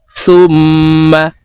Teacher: তাশদিদ ওয়ালা মিমের সাথে গুন্নার সহিত পড়তে হবে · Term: গুন্নাহ